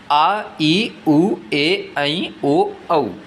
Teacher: ऐसे स्वर जिनके उच्चारण में लघु स्वर से अधिक समय लगता है दीर्घ स्वर कहलाते हैं।